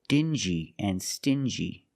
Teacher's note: These two words have the regular n sound plus the j like juice together.